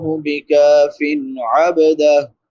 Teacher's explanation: فا پہ نون تنوین ہے، بعد میں حروف حلقی میں سے عین ہے تو یہاں پہ اظہار ہوگا